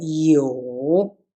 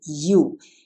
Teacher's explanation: Yeah, it looks like the English you, but this is Chinese pinyin, and Chinese is a tunic language, so we have tones here. So it's a curve, it's a third tone.